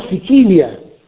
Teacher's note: La U diventa is, la L è palatale, quindi contro siculus abbiamo Sicilia. La L di Sicilia è una L seguita da I e quindi è palatale.